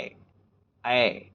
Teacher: तालु और कंठ दो चीजों को बना करके इन दोनों का यूज करके ही आप इसे बोल सकते हो। ऐ इसे कंठ तालव्य वर्ण कहते हैं।